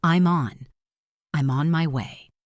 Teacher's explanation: Listen to the smooth connection between I'm and on.